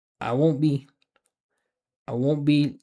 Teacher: Notice it's all connected. You don't hear where one word starts or stops.